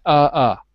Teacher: the r becomes an uh in British English